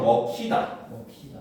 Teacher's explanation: 뒤음절 첫소리 히읗과 결합되는 경우에도 역시 두 음을 합쳐서 발음을 한다는 거죠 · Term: 축약